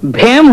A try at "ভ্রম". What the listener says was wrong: হেম নয়, ভ্রম, এটাতেও রফলা লাগবে।